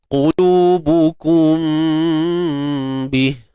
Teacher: kita baca secara itbaq syafatain, menutup dua bibir mulut kita, tutup tanpa kesempurnaan. Lemahkan pegangan di antara dua bibir kita. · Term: ikhfa majazi